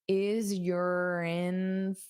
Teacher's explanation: First of all, this your can become more of an unstressed your is urin. [Music] So you can use this r to connect to the vowel sound